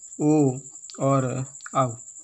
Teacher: कंठ का भी उच्चारण के रूप में होता है और होठों के माध्यम से भी होता है, इसलिए इसका नाम रखा गया कंठोस्थ। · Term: कंठोष्ठ